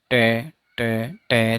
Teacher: जो passive articulator है, passive articulator होगा टीथ रिज · ठीक है, तो टे आप मेरे साथ बोल के देखना, टे टे टे। तो जीभ का जो आगे वाला भाग है वो दांतों के ठीक ऊपर जाके टकरा रहा है।